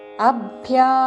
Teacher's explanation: యోగే దీర్ఘములు న హ్రస్వము